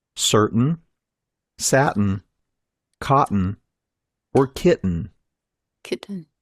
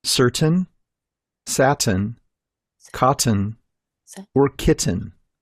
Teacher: Can you hear a difference? In American English, these words are pronounced with the glottal T.